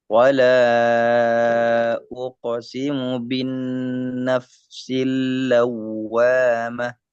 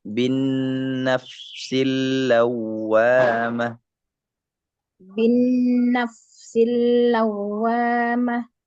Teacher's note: Nunnya tasydidkan, lamnya tasydidkan.